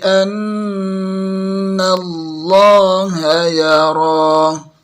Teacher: Lam lafzul jalalah kita tebalkan. Kalau kurang tebal masih salah.